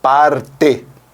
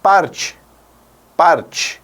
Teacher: Você dirá parte, parte. Ou seja, este som de E sairá como I